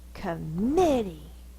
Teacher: Now if we fuss at our dog named Committee, committee, the stress is on the middle syllable. This one is going to be the schwa, because it's not stressed.